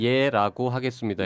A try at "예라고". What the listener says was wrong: 예라구가 아니고요. 예라고입니다. 발음 정확하게 부탁드려요.